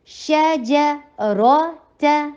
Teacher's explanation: शा भी light, जीम भी लाइट, रॉ हैवी और ता भी लाइट